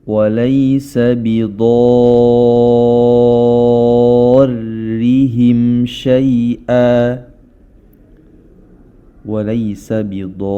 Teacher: mad asli bertemu dengan tasydid. Dengan kita baca, panjang dari mad tersebut adalah 6 harakat. Dan yang perlu kita ketahui adalah huruf ra berharokat kasrah, ya. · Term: mad lazim musaqqal kilmi